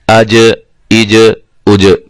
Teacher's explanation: حروف قلقلہ ہے، اس لیے یہ ہل گیا. اج اس کو ہلا کر پڑھیں گے، جنبش پیدا ہوگی